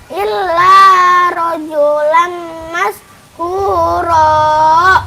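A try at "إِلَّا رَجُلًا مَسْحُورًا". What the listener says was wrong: Iya, jangan dibaca illa, jangan. Nah, ini kan lamnya lam tasdid doang, lam tasdid biasa. Kalau nun tasdid baru ditahan. Inna gitu. Kalau ini lam tasdid mah nggak usah ditahan-tahan, ya. Illa kalau ada panjangnya tuh nih.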